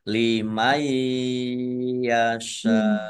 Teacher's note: nun sukun bertemu dengan huruf ya, bacaan itu bi gunah masuk dengan mendengung. Mendengung ya, ditandai ya-nya ada tasdidnya.